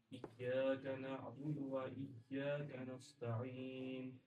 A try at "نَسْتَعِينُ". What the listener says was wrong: نس صاد نہیں نس پڑھیں گے نا تو سین موٹا ہو جائے گا اور موٹا حرف کون سا ہے سین اور صاد میں سے کون سا ہے موٹا حرف صاد ہے نا تو صاد کی بو نہیں آنی چاہیے ٹھیک ہے سین کا نستعین